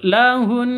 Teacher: Kalau berhenti maka cara bacanya suara Hun itu Ditekan dan ditahan sampai dua ketuk dua harakat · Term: Nun tasydid